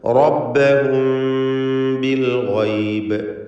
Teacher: റബ്ബഹും ഇതിൽ റായിനെ തടിപ്പിച്ച് തഫ്ഖീം ചെയ്ത് ഉച്ചരിക്കുക